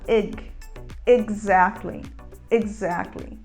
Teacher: a gente não fala exactly com um som de c mas a gente usa um som de g